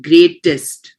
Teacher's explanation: you will put more emphasis on the middle T rather than the last T.